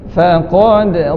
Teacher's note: Nipiskan huruf fa tu, qaf dal, qaf tebalkan, dal qalqalah dan nipiskan faqad.